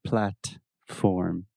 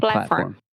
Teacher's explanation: I didn't pronounce the T. Yeah, well, you used what we call a stop T.